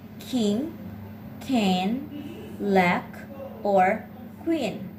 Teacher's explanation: The K is made by stopping the air with the back of your tongue and your throat. The K is a voiceless sound. It has a voice counterpart, the consonant sound G. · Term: consonant sound K